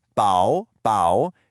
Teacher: It's a third tone followed by a neutral tone.